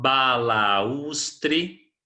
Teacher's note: 4 sílabas e a sílaba tônica é a penúltima